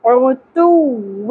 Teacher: عین وسط حلق سے تا باریک